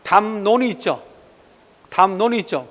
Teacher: 미음과 니은 됐죠. 따라서 리을이 니은 됐으니까 교체가 된 거죠. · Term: 순행동화